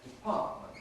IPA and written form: dɪˈpɑːʔmənt (department)